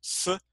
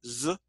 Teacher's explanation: the difference between voiced and unvoiced, but your tongue is still going up to the same area, but not quite touching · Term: fricatives